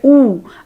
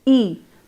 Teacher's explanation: So lip rounding, I will just like you to take care of this particular thing, that as you compared I and you probably noticed that your lips changed shape as you shifted from the front vowel to the back one. Your lips were rounded as you pronounced you. They were unrounded, spread or neutral as you produced E. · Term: round vowel